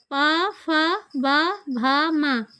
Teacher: पा, फा, बा, भा, मा इनका पा वर्ग के अंतर्गत इनको रखा गया है। इनका उच्चारण स्थान ओष्ठ है